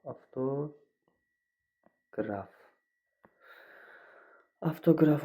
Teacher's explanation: Avtoqraf sözündə f, bir də v f-ya keçmişdir.